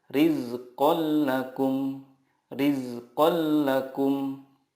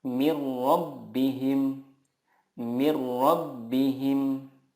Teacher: nun sukun atau tanwin bertemu dengan lam atau rol cara membacanya meleburkan nun sukun ke huruf berikutnya tanpa guna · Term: idgham billaghunnah